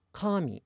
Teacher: the word for God is pronounced high to low